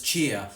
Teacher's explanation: In New Zealand, they have the cheer-chair merger, which means that the near vowel merges with our next vowel, the square vowel. · So cheer and chair both end up being pronounced as cheer.